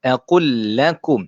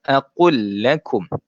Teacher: kita masukkan terus sahaja lam yang pertama ke dalam lam yang kedua.